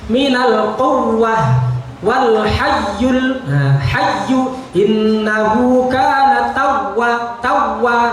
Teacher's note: Menampakkan rikhwah atau aliran suaranya pada huruf ya dan wawu yang bertasdid. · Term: naber